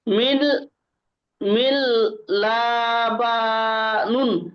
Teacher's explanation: নুনের নিচে দুই জের এসেছে তানবিন তানবিনের আওয়াজ নুন সাকিনের আওয়াজ একরকম